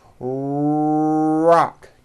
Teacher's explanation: your tongue moves back in your mouth it doesn't come forward it's pulled back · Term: American R sound